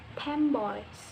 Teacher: The N become like a M because it comes before B. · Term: assimilation